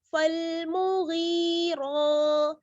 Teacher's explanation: را پر کھڑا زبر ہے تو یہاں پر را کو ہم پر یعنی موٹا پڑھیں گے